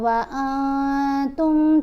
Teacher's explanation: نون کے اوپر ہم نے اخفا کیا، نون کی آواز کو ناک میں چھپا کر پڑھا جائے گا اور ایک الف کی مقدار جتنا ٹھہر کر بھی پڑھا جائے گا